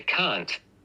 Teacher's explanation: say can't with the release t